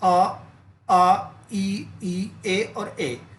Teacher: दो भागों में बांटा गया है आवर्त मुखी और वर्त मुखी आवर्त मुखी का मतलब है जिन स्वरों को बोलने के लिए होठों को गोल ना करना पड़े